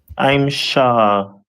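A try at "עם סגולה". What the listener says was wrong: So that letter, the first letter after I'm is Sa, as opposed to Shah. So I'm Sagala, right?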